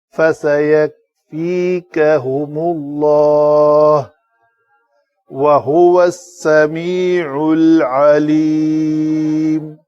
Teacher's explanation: ہا کے اوپر پیش ہے، واؤ کے لیے شفتین گول ہوں گے، ہا کے لیے بھی